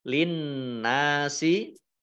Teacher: Nun tasdid itu dibaca gunnah atau mendengung, ditahan 2 harokat. · Tapi alif lamnya ini disembunyikan. Nah, alif lamnya alif lam samsiah karena tidak dibaca, langsung masuk ke huruf berikutnya yaitu nun, ditandai dengan ada tasdid.